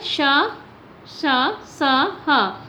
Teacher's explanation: ये हमारे उष्ण व्यंजन क्यों कहा जाता है? क्योंकि जब भी इनका उच्चारण होता है तो रगड़ की वजह से गर्माहट यानी कि उष्ण यानी गर्मी